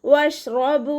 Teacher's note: ബ കൂടെ വാവ് മദ്ദാണ് വന്നിട്ടുള്ളത്, 2 കൗണ്ട് നീട്ടിക്കൊടുക്കുക.